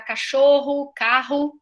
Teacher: Dentro da palavra, então, é os 2 R's. É o som do R, que é a minha língua tocando o céu da boca e fazendo uma fricaçãozinha, né? Assim como F, V, e o sh, eu faço uma coceirinha no céu da boca, tá? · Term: R forte